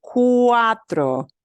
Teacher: And notice we've got a diphthong, U and A